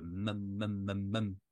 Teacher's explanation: la consonne bilabiale où on bloque les lèvres pour faire un son, et le A où on a la bouche plus grande ouverte pour faire mam, mam, mam.